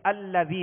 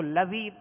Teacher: تو اب یہ یہاں پہ حمزہ لکھا ہوا ہے اور یہ حمزہ کو زبر دے کر اس کی زبر کے ساتھ ہم لام کو ملا کر ادا کریں گے ، یعنی الذی پڑھیں گے، اس کو لذی نہیں پڑھیں گے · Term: حمزہ وصلی